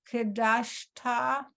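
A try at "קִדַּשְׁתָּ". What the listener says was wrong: Okay, but remember that's a key. Key dashta.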